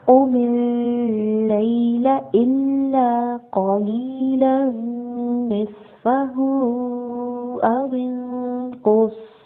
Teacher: قاف heavy letter ہے، پر پڑھیں گے، اور صاد بھی ہیوی لیٹر ہے، اس کو بھی پر پڑھیں گے اور سیٹی کی آواز کے ساتھ پڑھیں گے